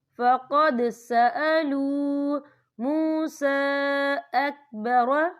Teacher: یہاں دال ساکن ہے تو یہاں پر کلکلہ ہوگا.